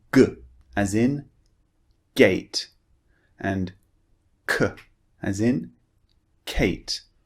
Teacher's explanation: they're a very short and forceful sound coming through from the back of your mouth · when you're producing G and K, feel the part of the mouth you're using. You're using the back of your tongue.